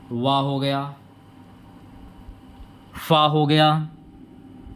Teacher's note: जहाँ पर वा आ जाए या फा आ जाए तो वहाँ पर आपका होता है दंतोष्ठ